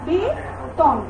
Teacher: তাহলে এখানে এই যে মধ্য অয়ের আগে আমার কি আছে, মধ্য অয়ের আগে আমার এ আছে, এখানে আমার অ আছে, এখানে আমার এ আছে বা এ আছে। তাহলে মধ্য অয়ের আগে এ থাকার কারণে আমার মাঝখানের অটার উচ্চারণটা কেমন হয়ে গেল, ও হয়ে গেল